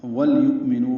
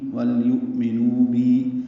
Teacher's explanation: واو کو لام سے ملائیں گے